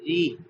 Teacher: زیر کے ساتھ جب را کو پڑھا جاتا ہے تو باریک پڑھا جاتا ہے